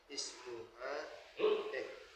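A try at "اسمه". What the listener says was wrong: Kalau H ada alifnya Pak. Kalau nggak ada alifnya, ismuhu.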